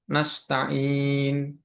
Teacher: Kemudian yang berikutnya adalah mat arid lis sukun. Panjangnya 2 sampai 6 karokat di akhir ayat.